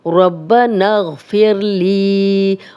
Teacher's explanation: لی یا مدہ ہے، جزم والی یا پیچھے لام پہ زیر 2 حرکات لمبا کریں گے